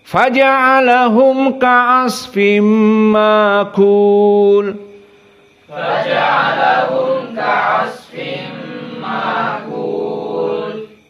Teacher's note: membaca dalam keadaan diganti hamzahnya dengan alif.